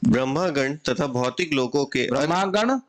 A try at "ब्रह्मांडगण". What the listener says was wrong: ब्रह्मागण नहीं, ब्रह्मांड होना चाहिए, ब्रह्मागण, ब्रह्मा तो आई नहीं इसमें, अच्छा बोलिए।